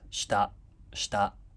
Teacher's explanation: Shita is flat pitch, as you can see. The first beat is unvoiced.